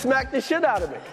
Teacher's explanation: Notice how smacked and the flow into each other. So it sounds like smack the. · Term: connected speech